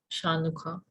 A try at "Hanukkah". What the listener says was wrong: Yeah, but the C is silent here.